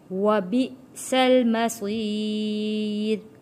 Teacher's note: یہاں پہ جھٹکا دے کے پڑھیں گے، حمزہ کے اوپر جزم ہے